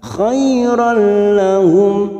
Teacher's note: fathah tanwin bertemu lam namanya bacaan idgham bila guna, hanya masuk tanpa mendengung, tanpa ditahan lama-lama